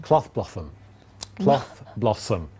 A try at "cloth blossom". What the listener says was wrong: You're mixing your S's with your T's. Cloth blossoms.